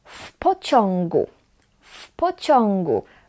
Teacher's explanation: We pronounce it as one word and we pronounce w as f